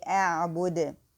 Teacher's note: make the qalqala or hesitation in the dal